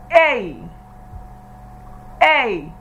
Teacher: A began from the A sound and entered into E sound. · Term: diphthongs